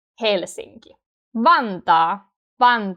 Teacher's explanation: notice that the first syllable is stronger